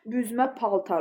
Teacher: Onda vurğu sona düşür. Yəni mənası da dəyişir.